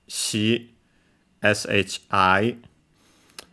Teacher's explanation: it's a kind of a sh sound. To be precise, it's slightly closer to the palate, because again, these are it's yet another palatalized consonant, so it's more sh than sh, and so shi.